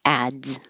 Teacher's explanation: So you have to stop the airflow with a D, ads, and then make a Z.